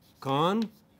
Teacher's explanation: The three term level is voiceless, velar, plosive.